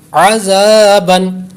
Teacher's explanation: عین زبر ع، زال الف زبر زا، عزا، با دو زبر بن، عذابن. زال کو ہم لمبا کر رہے ہیں اس لیے کہ الف سے پہلے زبر ہے، اور الف سے پہلے زبر ہو تو الف مدہ کا قاعدہ لگتا ہے، اس لیے ہم نے اس کو لمبا کیا.